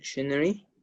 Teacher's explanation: in British English we use the stress at the first syllable of the word